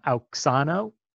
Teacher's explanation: what's written as an X, is a ks sound. Two different consonants put together, a k and a s.